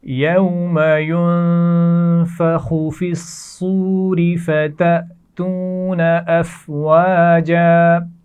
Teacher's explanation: ينفخ نون پر غنہ کیا جائے گا